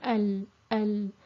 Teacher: So in general, the Laam is a thin letter. It's articulated from the near edges of the tongue, touching the upper gum. So it's important that the near edges of the tongue are used and not just the tip of the tongue. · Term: Arabic Lam